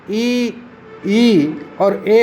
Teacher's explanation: जीवा के अग्रभाग से जिसका उच्चारण होता है वे अग्रस्वर कहलाते हैं। जैसे हिंदी में ई और ए अग्रस्वर है।